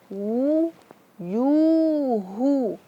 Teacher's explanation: Ini waw dan berharakat dhammah. Maka kita harus memenyongkannya.